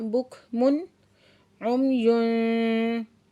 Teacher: तनवीन के बाद हरूफ हल्की में से आइन है तो इस तनवीन का हमने इजहार करके पढ़ना है